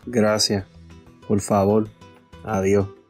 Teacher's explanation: As we are noticing, not only they don't fully pronounce the S at the end of words, they also seem to do the same with S's in the middle.